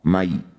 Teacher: Berikan huruf vokal i, mai, bukan e. Kalau e jadi mai, berarti belum lembut. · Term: huruf lin ya